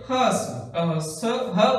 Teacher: हवा जो है एकदम से बाहर निकलती है, जैसे बहुत तेजी से बाहर निकलती है, जैसे ह व्यंजन। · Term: स्वर यंत्रमुखी